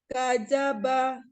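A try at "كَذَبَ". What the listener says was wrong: Kada, zal ya. Kadzaba.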